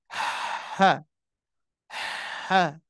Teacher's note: Di sini huruf H keluar dari tenggorokan bagian tengah.